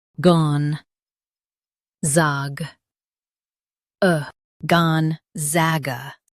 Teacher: Stress zag and keep gon soft.